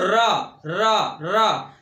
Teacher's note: जीभ लुढ़कती सी महसूस होती है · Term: लुंठित व्यंजन